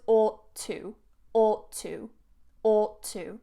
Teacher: notice that I don't separate it not ought to ought to joins together